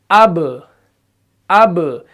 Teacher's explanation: पहले होंठ बंद हो रहे हैं, उसके बाद फिर से खुल रहे हैं। क्यों? क्योंकि कलकला की सिफत भी इसके अंदर आ रही है।